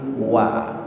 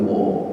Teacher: waw dipatah, kita diajari dari kecil wa bukan wo, maka bacalah dengan harkat wa